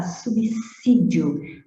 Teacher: nada de som de Z, é som de S inicial